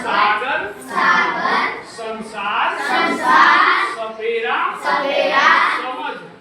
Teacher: जब जीभ हमारी दांत में जाके टकराती है, उसको क्या कहते हैं? दंत स्वर।